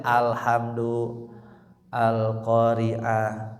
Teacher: Alif lam qamariyah dibaca lamnya jelas ya, terdengar al ya. Kalau samsiyah dileburkan, diidghamkan ke huruf samsiyah.